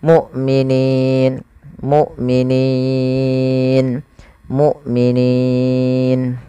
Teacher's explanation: Kita boleh membaca dengan dua harakat, boleh empat, boleh pula enam harakat. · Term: mad arid sukun